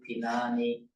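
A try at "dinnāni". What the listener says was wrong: Say much more clearly, Dinani, with really holding that double note, Dinani. And I mean, sometimes people ignore it a bit, but it is really important when you're chanting in unison to hold these double consonants to length, otherwise it's slightly out of step with everyone else.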